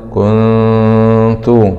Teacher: كاف ضمة كون، نون سكون مع الإخفاء الحقيقي